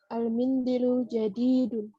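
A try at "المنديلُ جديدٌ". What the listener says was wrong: Harus panjang dinya.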